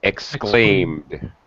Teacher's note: Exclaimed. Yeah, no extra vowel sound for the ed